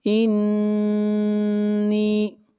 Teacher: نون کے اوپر شد ہے، غنہ ہوگا